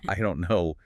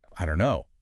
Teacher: the dropping out of the final t sound in don't. It just vanishes in casual speech before the k sound of no.